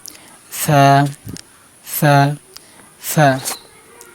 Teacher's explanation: জিবার আগা সামনে উপরে দুই দাঁতের আগার সাথে লাগে উচ্চারণ করবেন। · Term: সা হরফ